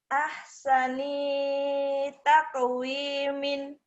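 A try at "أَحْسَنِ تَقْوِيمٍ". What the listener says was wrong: Pendek. Sani taqwimin. Ininya pendek. Sani tak. Sani taqwimin. Ininya pendek. Jangan nempel.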